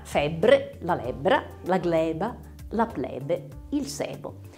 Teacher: quando ci cade l'accento ci interessa la sillaba tonica avremmo la è aperta